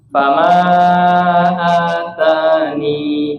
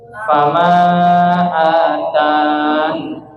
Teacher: Kemudian yang kedua, nun-nya dibaca sukun, jadi ya-nya dibuang.